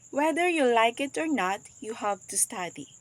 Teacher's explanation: the sustained juncture here is after the word not create a brief pause separating the two Clauses and emphasizing the contrast between liking it and having to study